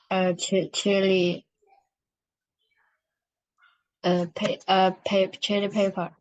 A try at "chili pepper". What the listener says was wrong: You say chili pepper, not paper.